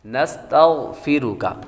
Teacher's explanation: غین حروف مستعلیہ میں سے ہے، اور حروف مستعلیہ کو ہمیشہ ہر حالت میں پر پڑتی ہے۔